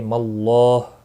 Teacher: اللہ کا لام زبر کی وجہ سے پر ہوگا، اس کے اوپر کھڑی زبر بھی ہے، ایک الف کے برابر کھینچ کر پڑھیں گے۔